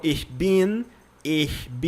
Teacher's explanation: No começo é difícil de fazer o ich, que é aquele chiadinho no fundo da garganta.